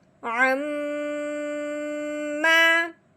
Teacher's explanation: اب ہم نے کیا کرنا ہے، عین کو میم مشدد کے ساتھ ملانا ہے اور ساتھ ساتھ ایک الف کے برابر لمبا غنہ بھی کرنا ہے۔ غنہ جو میم کا ہوگا وہ منہ بند کر کے ناک میں سے آواز نکالنی ہے۔